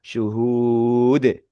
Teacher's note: Ketika diwakafkan maka dal huruf dal domah tanwin ini berubah menjadi dal sukun.